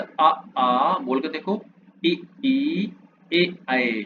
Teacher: अवत का मतलब हो गया कि गोल ना होना। तो लिखा है जिन स्वरों के उच्चारण में होठ वृत्त मुखी या गोलाकार नहीं होते हैं। जैसे अ आ बोल के देखो इ ई ए ऐ इसमें ओ नहीं बनेगा। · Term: अव्रत मुखी